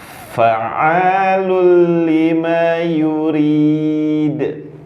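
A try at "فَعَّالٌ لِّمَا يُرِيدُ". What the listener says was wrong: Ya, tanda baca tasydid ada rasa. Fa. Ya, berhenti baru berjalan. Fa. Iya. Jadi jangan buru-buru. tasydid. Fa. Di dal ada sifat yurid.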